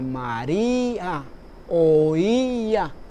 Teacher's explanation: Mientras que en las palabras terminadas con acento especial, el caso de María u oía, vemos ahí que el acento está en la vocal cerrada, en este caso la I, y se produce una sílaba aparte